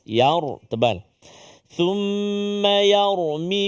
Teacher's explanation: Jangan thumma yarmi. Kalau yarmi tu tebal sebab ra sukun, ra mati sebelum ni baris atas.